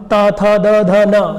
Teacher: तो जो आपकी जिह्वा है वो दांत को स्पर्श करके निकलेगी। स्पर्श व्यंजन भी है ये, ता एक स्पर्श व्यंजन में आता है।